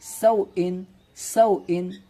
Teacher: اور سوئن میں واو ساکن سے پہلے زبر ہے، واولن ہوگا تو واولن کو نرم آواز کے ساتھ جلد ادا کریں گے، اور حمزہ کے نیچے دو زیر کی تنوین ہے تو اسے بھی جلدی سے ادا کریں گے · واو ساکن سے پہلے زبر ہے، واولن ہوگا تو واولن کو نرم آواز کے ساتھ جلد ادا کریں گے، اور حمزہ کے نیچے دو زیر کی تنوین ہے تو اسے بھی جلدی سے ادا کریں گے، اس طرح سے سوئن سوئن، ٹھیک ہے نا، اس طرح سے پڑھنا ہے۔